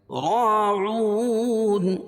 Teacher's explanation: راعون، را پر زبر ہے، را پر زبر یا پیش ہو تو را کو پر پڑھیں گے، اور را کے بعد الف ہے، الف سے پہلے زبر ہے را کے اوپر تو الف مدہ ہوگا، الف مدہ کو ایک الف کے برابر کھینچ کے پڑھیں گے